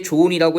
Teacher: 좋다에 은 결합하게 되면 발음할 때 좋은이라고 해가지고요. 히읗 발음되지 않고요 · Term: 히읗 탈락